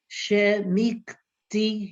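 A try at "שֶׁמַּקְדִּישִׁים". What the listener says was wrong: No, what's this vowel under there?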